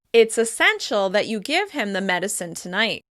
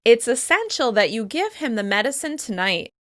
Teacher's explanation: I'm stressing the adjective essential as well as the verb give in order to focus attention on this strong recommendation.